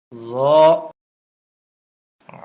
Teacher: ত জ এই হরফটিও 1 আলিফ পরিমাণ লম্বা হবে, জিহ্বার আগা উপরের দাঁতের আগায় লাগবে, নরম হবে, মোটা হবে